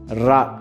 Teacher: நாவின் நுனி மேல் அன்னத்தின் மையப்பகுதியை உரசுவதால் ரகரம் தோன்றுகிறது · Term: வல்லின ரகரம்